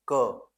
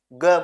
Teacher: अल्पप्राण। इनको बोलने में हमारे मुंह से हवा कम निकलती है।